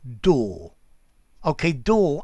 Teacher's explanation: door ends in r but that r is just about silent